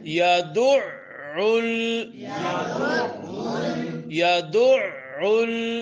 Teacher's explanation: یا زبر یا دال عین پیش دع عین گلے کے درمیان سے . یا زبر یا دال عین پیش دع عین لام پیش